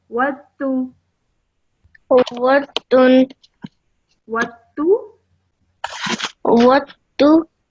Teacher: So in this case, you ignore the sound of the dal and straight away join the vowel to the ta.